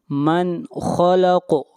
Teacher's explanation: خا اور قاف کو موٹا پڑھیں گے، اور قاف کے اوپر قلقلہ ہوگا، آواز کو ہلائیں گے۔